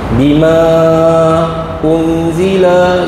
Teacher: Mad jaiz munfasil. Ha baca empat atau lima harakat ya. Paling pendek empat ya.